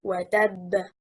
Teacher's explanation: The correct performance stressing on حركة التاء.